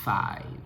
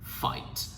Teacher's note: Đó chính là răng trên, môi dưới hở. Răng trên này, môi dưới này, hở. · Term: âm F